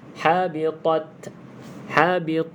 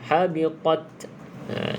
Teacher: kena ada sedikit bunyi hamburan terkeluar angin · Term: Hamas